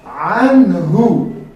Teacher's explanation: اینجا نون ساکن مظهر می‌شود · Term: اظهار حلقی